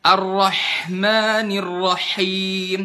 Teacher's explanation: Kalau berlebihan pada sifat, contoh berlebihan pada sifat hamas di huruf ha